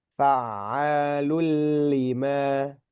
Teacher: domah tanwin bertemu dengan huruf lam. dia idgham nempel ke huruf lam